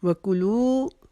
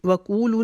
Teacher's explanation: کو نہیں کھینچیں گے, لو کو لمبا کریں گے. وکولو نہیں پڑھیں گے.